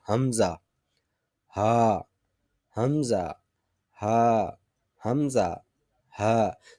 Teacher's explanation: حمزہ ہا کے اندر گول ہا جو ہے یہ انتہائی حلق سے یعنی اقصی حلق سے ادا ہوگی